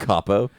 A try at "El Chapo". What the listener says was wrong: Did you say El Capo? pronounce the H. You pronounce the H